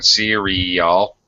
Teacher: it has a glide uh a y sound in between the vowels